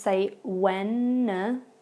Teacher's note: when you see that D sound, it is not pronounced. We just say Wednesday.